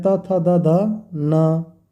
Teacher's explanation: जिन व्यंजन का उच्चारण दांत की मदद से होता है उसे दंतव्य व्यंजन कहते हैं